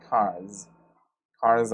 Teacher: the last consonant sound in the word car is an R sound so it is voiced